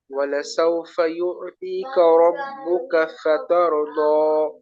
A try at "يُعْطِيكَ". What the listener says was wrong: ভাই ইউতি, এখানে কিন্তু তার থেকে উচ্চারণটা আলাদা হলো না। ইউতি, ইউতি, আরেকটা হলো তি। এই পার্থক্যটা এখানে আমাদের খুব দরকার, এটা খেয়াল রাখবেন।